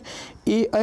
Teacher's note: कंठ तालव्य में देखिए ए ऐ का उच्चारण कंठ ताल की सहायता से होता है